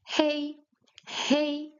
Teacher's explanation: In Chinese the h is voiced. So you pronounce it hey.